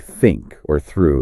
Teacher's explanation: Then there's the unvoiced one like think or through. That one's just air. For both the tongue tip needs to be gently uh just slightly between the teeth.